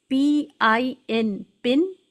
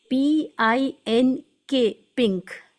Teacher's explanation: پن میں sound of نو N ایک دم clear تھی، پنک میں ساؤنڈ آف این کلیئر چاہ کر بھی نہیں ہو پا رہی ہے · آپ نے یہ لفظ دونوں طرح پڑھے اور سنے ہوں گے، جس میں ہم ساؤنڈ آف نون کو کلیئر یعنی by touching to the ہارٹ پیلٹ، زبان کی نوک کو اوپر کے تالو سے لگاتے ہیں تو نون کی صاف آواز ہے، اور نہیں لگاتے ہیں، کہیں ہولڈ کر لیتے ہیں، وہ نون کی ان کلیئر ساؤنڈ ہے.